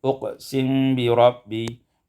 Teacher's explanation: uqsimu bi rabbi iskanul mim ma'al ikhfa, sukunkan mim dengan ikhfa